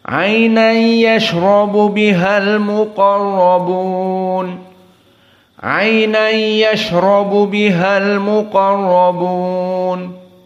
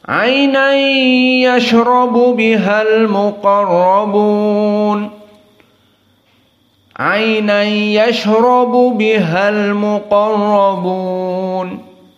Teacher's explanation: idgham bila gunnah, hanya sekedar memasukkan tanwin kepada ya dan tanpa dibaca dengan gunnah, sehingga gunnahnya tidak ada